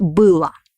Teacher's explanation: we write o but pronounce it like ah because it doesn't have a stress